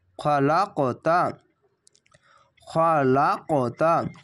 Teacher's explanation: এখানে কলকলাটি ধাক্কা মেরে ওপরে সাউন্ড যাবে।